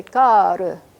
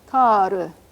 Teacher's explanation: The first vowel of that word is much longer than the second one, and it's written, let me write this one example because that's a good contrast.